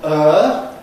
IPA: ɜː